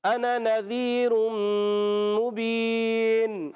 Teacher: یہ اس کا الف جو ہے یہ زائد الف ہوتا ہے، اس کو کھینچنا نہیں ہوتا. یہ واحد متکلم کا صیغہ ہوتا ہے تو پڑھیں گے انا، اس کو انا نہیں پڑھیں گے.